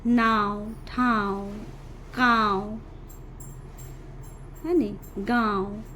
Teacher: जेकर उच्चारण में मुंह और नाक दुइयों का उपयोग होला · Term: अनुनासिक